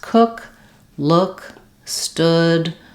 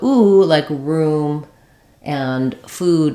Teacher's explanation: cook look stood uh a few like that will have the uh vowel instead of the oo vowel